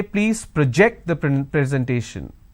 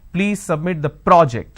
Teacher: when i'm stressing on the second syllable it's a verb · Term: stress on the second syllable